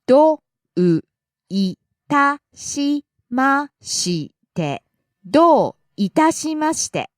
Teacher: Do starts high, falls on the second syllable. どう Itashimashite starts low, rises on the second syllable ta, falls on the second to last syllable.